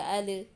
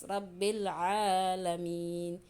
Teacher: Cara bacanya alnya harus jelas, tapi ingat jangan dipantulkan. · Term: izhar qamariyah